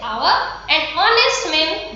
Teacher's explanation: हम देखिए यहाँ पर जो H है ये बहुत साइलेंट है, इसमें H का साउंड उच्चारण नहीं होता है, H का साउंड हमें सुनाई नहीं देता है